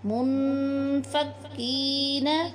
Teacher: نون ساکن کے بعد حروف اخفاء میں سے حرف فا آ گیا ہے، اس لیے یہاں پہ ہم غنہ کریں گے۔